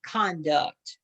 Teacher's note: You're going to put the accent on the first syllable.